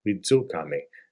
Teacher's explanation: The J is that DZ sound. Wizu could be widu, a little bit of a G, but more DZ.